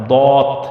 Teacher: দত অক্ষর মাড়ির দাঁতের গোড়া থেকে মোটা করে পড়তে হয়